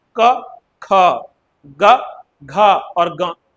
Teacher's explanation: तो भाई जब हम क बोल रहे हैं तो कम समय लग रहा है। ख में ज्यादा समय लग रहा है। ग में कम समय लग रहा है।